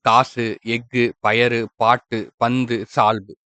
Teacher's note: ஒரு மாத்திரைக்கு பதிலா அரை மாத்திரையா வந்து குறுகி ஒலிக்கும். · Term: குற்றியல் உகரம், குற்றிய லுகரம்